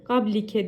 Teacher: B harfinin üzerinde cezim varsa eğer kalkale yapılır Yani b harfini titretiriz